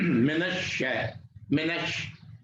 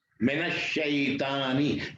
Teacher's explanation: نون جا کے شین کے ساتھ جا کے مل جاتا ہے. منش ہے، منش، اور تشدید ہے، اس پر شدہ ہے، دو بار پڑھا جاتا ہے. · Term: حروف شمسی